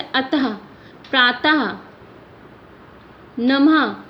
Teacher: हम आ लग के ये बिंदी नहीं लिखते हैं, सिर्फ उस व्यंजन के बाद हम 2 बिंदियां लगा देते हैं और हमेशा इसके उच्चारण में हल्की सी ह की आवाज़ आती है। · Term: विसर्ग